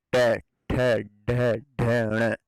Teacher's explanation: मूर्धन्य ध्वनियां, जिनके उच्चारण में जीभ कठोरता से तालु को छूती है